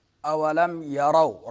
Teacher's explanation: اولم یرو، را کو پر پڑھیں گے، واو ساکن ہے، اس سے ماقبل حرف را کے اوپر فتح ہے تو واو لین ہوگا۔